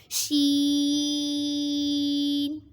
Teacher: شین زبان کے درمیان اور تالو کے درمیان سے ادا ہوتے ہیں۔